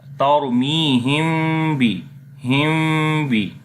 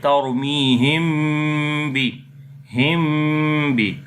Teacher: So I told already, if after the mim sakin, if next letter is ba, we make ikhfa shafawi, we hide the sound of mim into nose.